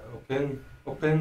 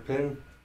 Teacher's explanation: Sometimes you'll see it with an O, sometimes you'll see it without. Usually in the east they drop that little short vowel, in the west they'll add it back on, or it's still there.